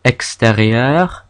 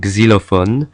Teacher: X, as in English, is usually a x sound, like in extérieur, but at the start of the word it makes a gz sound, like in xylophone.